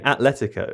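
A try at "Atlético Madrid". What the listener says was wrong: Because it's a soft T which runs into the L, right? Atletico Madrid. Atletico Madrid. Atletico Madrid. Atletico Madrid.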